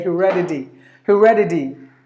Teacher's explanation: because the T is in between the vowels, so the T is pronounced like the D.